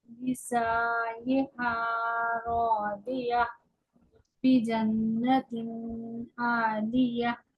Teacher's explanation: जन्ना, इस पर गुन्ना भी होगा। और ये मुशद्दद है, सख्ती से पढ़ा जाएगा।